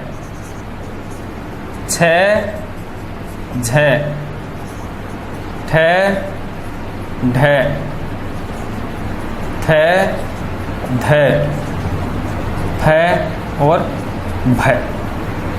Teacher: महाप्राण है। अर्थात इनके उच्चारण में छाती जो है श्वास वायु को रोकने का प्रयास करती है, रोकती है कुछ समय के लिए, उसके बाद झटके से छोड़ती है, जिससे श्वास वायु एक गुबार के रूप में झटके से बाहर निकलती है, तीव्र गति के साथ बाहर निकलती है।